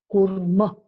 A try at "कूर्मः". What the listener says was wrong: Kurma. Kurmaha. Don't drop the visarga.